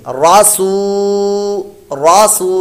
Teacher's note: اگلا کلمہ را زبر را، سین واو پیش سو، واو مدہ ہے، واو ساکن سے پہلے پیش تو واو مدہ لمبا کریں گے